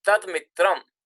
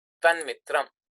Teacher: Now dakara is the dental sound and it will change into the corresponding nasal, which is nakara.